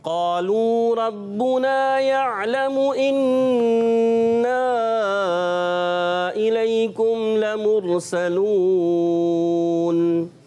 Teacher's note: قالو کو ایک الف کھینچنا ہے، قا کو بھی ایک الف اور لو کو بھی، کیونکہ شروع میں الف مدہ واو مدہ۔